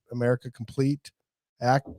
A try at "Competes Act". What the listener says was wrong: Competes act. You said completes.